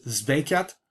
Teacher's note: it probably would be a voiced sibilant here because of voicing assimilation rather than devoicing the following stop. It's not indicated in the orthography.